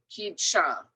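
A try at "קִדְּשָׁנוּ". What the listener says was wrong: I don't hear the vowel here. Blend into the shva.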